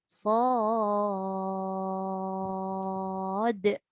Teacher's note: Kita kena tahu dal mesti bunyikan qalqalah dekat ujung dia.